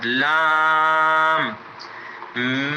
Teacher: لام، لام، لام کے ادا کرتے ہوئے بعض بچے، بعض ساتھی لام لڑکا دیتے ہیں لام کو، یا لام کی جگہ را پڑھتے ہیں، تو یہ غلط ہے۔ لام کی ادائیگی بھی زبان جب سامنے والے دانتوں کے جڑ سے لگے گی تو پھر لام ادا ہوگا۔